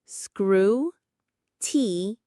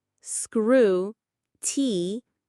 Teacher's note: The stress is right at the very beginning.